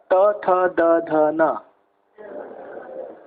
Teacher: Tongue in between two teeth. Not hitting from behind, but in between two teeth.